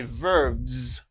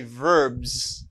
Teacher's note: And when you put S to form its plural, you say verbs. Give the sound z.